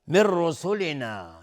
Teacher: من رسولنا نون ساکنش را ادغام بدون غنه